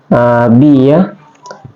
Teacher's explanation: Ba di sini adalah dia asyafatain, keluar di dua bibir, berbaris di bawah bi.